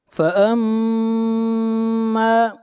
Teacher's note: میم کے اوپر شد ہے، غنہ ہوگا، اور میم کو کھینچ کر پڑھیں گے 1 الف کے برابر، الف مدہ ہے.